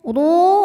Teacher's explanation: Cara bacanya ra dibaca panjang 2 harokat. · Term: mad tabi'i dhahiri